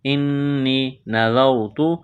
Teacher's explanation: یا ساکن سے پہلے زیر ہے ایک الف کے برابر اس کو کھینچنا ہے